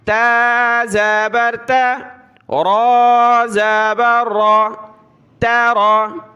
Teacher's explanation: تارا باریک تا ہے نقطے والی، اس کو پتلا کرنا ہے، اور را کلرفل ہے، اس کو ہم موٹا پڑھیں گے